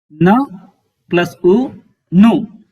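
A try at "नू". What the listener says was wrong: No, it's a dirgha ukara. It's not a hrasva ukara. So your dirgha u, nu.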